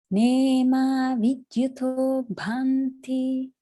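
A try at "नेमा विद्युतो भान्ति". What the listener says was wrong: Good, good. A little bit on the long bhanti.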